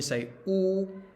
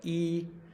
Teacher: see how your lips are like rounded, but e, your lips are open. And then you can change the sound just doing that without moving your tongue.